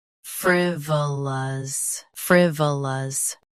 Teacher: Stress fr. Keep v soft and end with lus.